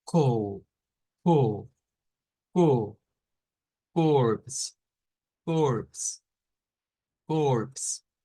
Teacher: o o así es la o pero esa es e e como redondeando la boca pero diciendo la e abierta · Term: diéresis